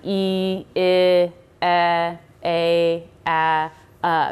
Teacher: I just went from E my jaw being completely up my jaw dropped a little bit with each step